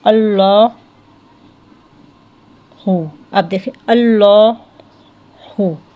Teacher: لام میں چونکہ میلان زیادہ ہوتا ہے تو وہ اس میلان کی وجہ سے موٹا ہوتا ہے